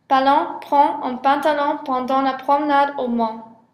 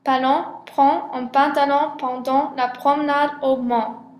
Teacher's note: P est une occlusive sourde bilabiale. Pour la production de P, le passage de l'air est bloqué par les deux lèvres puis relâché très rapidement. · La nasale ON est une voyelle postérieure, écartée et ouverte. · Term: occlusive P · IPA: [p], [ɑ̃]